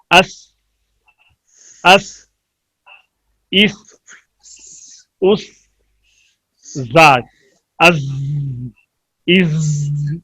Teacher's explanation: ادائیگی کے وقت حروف میں تیز سیٹی پیدا ہو زا سین صاد میں پائی جاتی ہے. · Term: صفیر